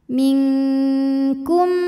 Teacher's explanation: mim yang sukun dileburkan ke mim kedua disertai dengungan jadi bunyi m dan tahan minkkum mutaam selanjutnya ada hukum mim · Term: idgam Mimi, idgham mimi